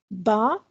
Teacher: बा is pronounce from the वेट part of both the lips बा दोनों होठों के तर हिस्से के मिलने से अदा होता है